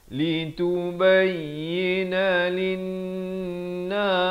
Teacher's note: tekankan lin. Di sini wajibul gunnah, wajib dengan 2 harakat